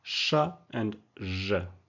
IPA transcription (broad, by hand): ʃ ʒ